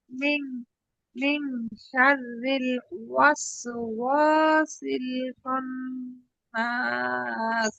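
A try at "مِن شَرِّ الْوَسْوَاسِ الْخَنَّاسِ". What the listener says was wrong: না, খালি গুণ না, টান না।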